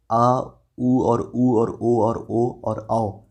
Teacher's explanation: जीभ के जो पश्च भाग होगा उसके आधार पर आ, ऊ और ओ और औ ये सभी पश्च स्वर के श्रेणी में आते हैं